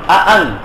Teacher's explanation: দুটোটা হামজাকে স্পষ্ট করে উচ্চারণ করা হবে। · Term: তাহকিকিল হামজাতাইন